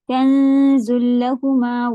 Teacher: नून को जा की तरफ छुपाते हुए पढ़ें